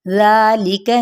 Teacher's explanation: अब ये क्या है, ज़ा पे मद्दे इसलिए बिल अलिफ का कायम मुकाम है, इसको एक अलिफ या दो हरकत के बराबर खींचेंगे और ज़ाल नरमी के साथ पढ़ेंगे